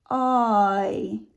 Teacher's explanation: Ow, right? Or boy is a diphthong of aw, moving to e.